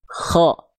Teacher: huruf kho ketika berharokat fathah, bunyi vokal yang keluar itu tidak akan terdengar seperti vokal A. Tapi dia akan terdengar seperti vokal O. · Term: tafkhim